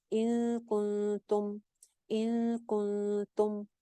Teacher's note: پہلے نون ساکن کے بعد کاف ہے اور دوسرے نون ساکن کے بعد تا ہے, دونوں ہی لیٹرز وہ ہیں جس کے اوپر اخفا ہونا چاہیے اور دونوں باریک ہیں, تو لہٰذا دونوں جگہ پہ سیم ایک ہی لینتھ کا ایک جیسا غنہ کریں گے